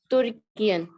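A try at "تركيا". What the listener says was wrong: तुर्कियन तो लिखा ही नहीं कहीं। तुर्किया लिखा है, तुर्किया पढ़ा। तुर्किया।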